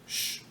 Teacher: a fricativa pós-alveolar surda